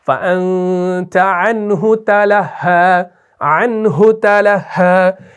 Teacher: انہو کو آپ کھینچتے نہیں ہیں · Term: عدم صلہ